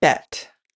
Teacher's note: the b in bet is a voiced consonant, which means that the vocal cords in your throat are vibrating when producing the sound.